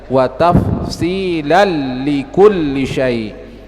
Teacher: tanwin tidak terbaca, yang terbaca langsung di huruf lamnya. Sama dengan huruf ra juga demikian.